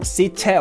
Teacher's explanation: da verbindet man quasi das T vom Vorsatz mit dem E oder mit dem Ä aus dem danach liegenden Wort